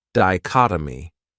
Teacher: Another great noun is dichotomy. This word has 4 syllables, and the stress is on that second syllable